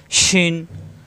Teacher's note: শিন, শ্বাস আওয়াজ হবে, জিহ্বার মাঝখানে উপরে তালুতে,